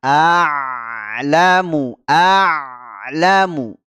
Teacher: kita berhenti di makhraj huruf Ain ya di tenggorokan bagian tengah aamu aamu ya jangan diputus begitu saja huruf Ain ketika sukun